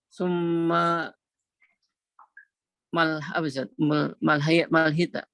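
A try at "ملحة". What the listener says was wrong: sudah dhamma. Mimnya sudah dhamma. Mulhatu.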